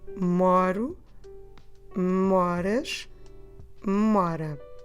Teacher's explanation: Always stressing the second to last syllable, okay? Not the ending, but the second to last.